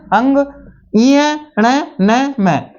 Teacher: इनका उच्चारण करेंगे तो हवा है वो नाक के जरिए बाहर निकलेगी। इनका जो उच्चारण होगा वो नाक में होगा, नाक के द्वारा उच्चारित होंगे। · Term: पंचम वर्ण